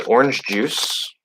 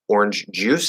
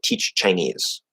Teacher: to do the ch and j, you first have to go into that TD position, push that out, and go into, if it's T, it's T plus sh, so ch. If it's j, it's going to be D plus zh, the voiced sh sound, sh, and we get j.